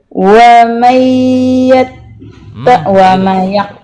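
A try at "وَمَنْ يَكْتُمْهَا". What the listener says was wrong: Wa may tahan yang lama dengungnya, Bu. Tahan.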